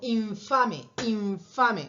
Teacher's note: infame infame ustedes piensan que están pronunciando una n infame pero en realidad están pronunciando una especie de m con efe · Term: labio dental